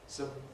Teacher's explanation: We don’t separate the lips. We just turn the [b] into an [m] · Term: nasal release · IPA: [səbˈmɪt]